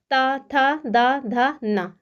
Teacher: आपको जो जिह्वा है यानी आपकी जो जीभ है ना वो दांत से टकराएगी। जैसे बोल के देखिए ता था दा धा ना, देखिए आपका जो ऊपर वाला दांत है उससे जिह्वा जा करके उसमें टक्कर मार रही होगी, यानी कि आपकी जीभ उसमें टकरा रही होगी। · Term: त वर्ग, ता वर्ग